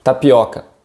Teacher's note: we have this o sound which is a bit more open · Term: open o sound